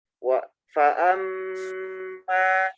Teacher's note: Selain huruf bibir, huruf mim itu juga huruf hidung.